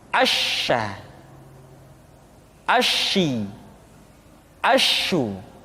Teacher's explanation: sifat at-tafashi, yaitu menyebarnya angin di dalam mulut kita.